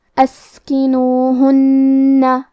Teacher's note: لہذا ہمیں 2 حرف کے برابر نون کو پڑھنا ہے، کیونکہ تشدید کی اصلیت 2 حرف ہے. جیسا کہ یہاں حرف نون ہے تو یہ 2 نون ہے، نون ساکن اور نون متحرک، اور ہم یہ حرف کو غنہ کے ساتھ بھی ادا کریں گے.